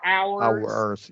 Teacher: we're adding that little schwa before the R.